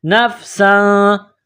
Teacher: سین میں سیٹی کی آواز پیدا کرنی ہے. سین کے اوپر 2 زبر تنوین ہے، تنوین کے بعد فا ہے، حروف اخفا ہے، تو یہاں غنہ کیا جائے گا، آواز ناک میں چھپائی جائے گی.